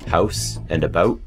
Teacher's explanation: Some people also raise the ow sound to o, like in the stereotypically Canadian sounding house and about. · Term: Canadian raising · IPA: /həʊs/ /abəʊʔ/